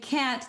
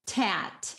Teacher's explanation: a child fronting a sound. So if the child looks at the cat, instead of saying cat, the child's going to say tat.